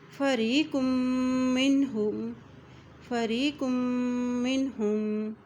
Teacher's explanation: قاف کی دو پیش کو میم کے ساتھ ملائیں گے کیونکہ میم کے اوپر شد ہے، اور جب میم کے اوپر شد آتی ہے تو وہاں پر غنہ کیا جاتا ہے